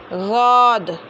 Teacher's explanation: ज़बान की करवट को दाढ़ों की जड़ में लगा कर ही अदा करना है, चाहे ज़ौद पढ़ो या दौद पढ़ो, मगर ज़बान की करवट को दाढ़ों की जड़ में लगा कर ही पढ़ना है।